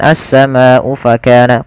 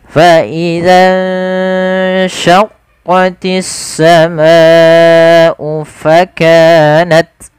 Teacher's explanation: Maka kita wajib membacanya sepanjang 4 atau 5 harakat, jangan dikurangi. Misalkan as-sama'u fakana, kurang, itu kurang tepat, dan itu mengurangi dari kadar mad wajib, tidak boleh juga.